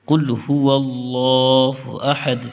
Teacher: اس اللہ کے نام کو موٹا کرنا ہے، اس لیے کہ اللہ کے نام سے پہلے واو کے اوپر زبر ہے، اور لفظ اللہ کے نام سے پہلے زبر یا پیش ہو تو اللہ کا نام موٹا یعنی پر ہوتا ہے۔